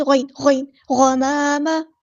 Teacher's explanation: گمامہ نہیں پڑھنا، یہ گاف نہیں، غین